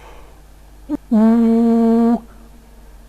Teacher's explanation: a vowel that is produced with a back quality, where the tongue is extremely high in the mouth